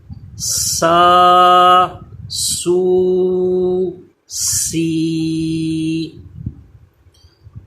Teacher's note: next یہ سین، اس پہ بھی زا کی طرح سیٹی پیدا ہوتی ہے، زبان دانتوں سے پیچھے رہے، اور سی یہ سیٹی کی آواز اس پہ پیدا ہوگی، یعنی ثا سے اس کا یہ فرق رہتا ہے، ثا پہ سیٹی پیدا نہیں ہوتی، زبان دانتوں سے چپکتی ہے، سین پہ سیٹی پیدا کی جاتی ہے